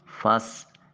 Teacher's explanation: فس سین حرف صفیریہ ہے، سیٹی کی آواز آئے گی۔